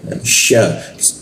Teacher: huruf sya ya posisinya di tengah-tengah lidah dia